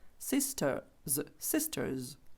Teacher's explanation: там де sisters то там р не чується бо наступна йде приголосна